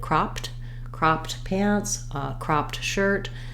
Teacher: So if I'm saying he had cropped pants, cropped, I'm going to say that T sound. It's going to be aspirated